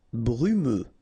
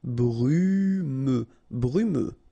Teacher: final X not pronounced, so you get this E and then U